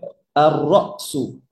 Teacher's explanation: দেখেন এখানে হামজার উপরে সাকিন আছে। হামজা একটা শক্ত শব্দ, বাতাস বন্ধ থাকে।